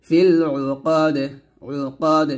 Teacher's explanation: অক্ষরের দালটা কলকলা হবে